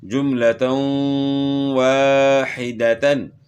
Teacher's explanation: واو کے اوپر کھڑا زبر ہے، اس کو ایک الف کی مقدار کے برابر کھینچنا ہے